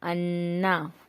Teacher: غنہ کی مقدار 1 الف کے برابر ہے، جیسے حمزہ نون زبر ان، نون زبر نا، انا.